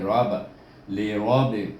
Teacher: Baik, kalau kita sambung innal insana, kemudian bertemu dengan, iaitu kalimah bermula dengan lam baris di bawah li, kemudian ra baris di atas bunyi ra, tetapi dia ditasydid dengan huruf ba, jadi rab, li rab. Ra baca dengan tebal kerana dia baris di atas.